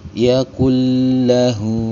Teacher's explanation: nun sukun yang menghadapi huruf lam, disebut dengan hukum bacaan idgham bila gunnah, maka cara bacanya dibaca dengan lebur tanpa disertai dengan dengungan